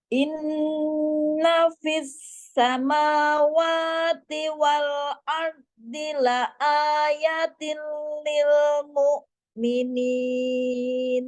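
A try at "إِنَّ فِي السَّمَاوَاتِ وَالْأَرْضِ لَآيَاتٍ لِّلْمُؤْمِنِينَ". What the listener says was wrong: Nah, terbaca la ayatil berarti ianya terbaca pendek. Harusnya ianya ya, ianya panjang juga ya.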